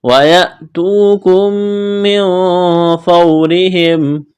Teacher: میم ساکن کے بعد میم ہے یہاں ادغام کریں گے. میم کا میم میں غنہ کریں گے